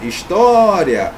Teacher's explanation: a mais forte está aqui na penúltima sílaba. É a paroxítona.